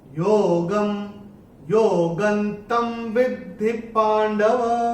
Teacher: अनुस्वार के बाद त आएगा तो अनुस्वार का उच्चारण होगा न